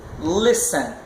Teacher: A sílaba tônica está lá no início, no lis.